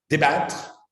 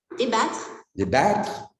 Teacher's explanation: Hein, avec un A très plat